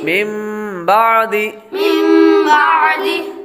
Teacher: من بعدی یہ نون کے بعد اقلاب کا قاعدہ ہم نے پڑھا تھا, نون ساکن یا تنوین کے بعد حرف با آ جائے تو اقلاب ہوگا, یعنی نون ساکن اور تنوین کو میم سے بدل کر اخفا کریں یعنی غنہ کر کے پڑھیں. تو نون ساکن کے بعد با آ رہا ہے تو اس لیے نون کو میم سے بدل دیں گے.